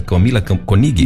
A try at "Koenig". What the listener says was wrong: Não, é Koenig. Koenig. O O tem o som de E. Koenig.